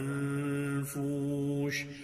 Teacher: نون ساکن کے بعد فا جو ہے وہ حروف اخفا میں سے اخفا ہو رہا ہے